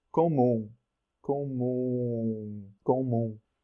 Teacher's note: final m doesn't close lips all the way